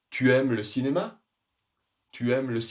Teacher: Il y a une intonation montante. Nous allons monter notre voix, notre prononciation.